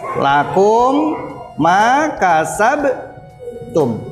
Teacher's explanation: lah cara membacanya ketika ada mim sukun bertemu dengan huruf mim cara membacanya itu memasukkan huruf mim pertama ke huruf mim kedua seakan-akan ditasydid juga diikuti hunah atau dengung dua harokat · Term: idgham mimi